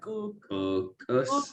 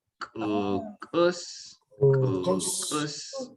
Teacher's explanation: we got these glottalized Ks